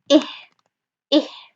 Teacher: So أقصى الحلق is the articulation point of ha and hamza.